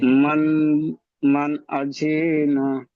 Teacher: মান আজিনা, এখানে নুনটি গুন্না মানে কি, আওয়াজটি নাকে তোলা, তো এখানে গুন্না করে পড়া যাবে না। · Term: ইজহার